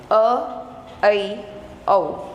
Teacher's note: ये आपके अर्ध विवृत, इनमें आधा खुला रहेगा, अ, ऐ, औ।